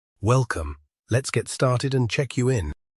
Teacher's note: There is a pause after welcome, so the sentence has 2 thought groups, welcome and let's get started and check you in. The stressed syllables are well, let's, star, check, in. The other words are unstressed, so the pitch becomes lower on those words.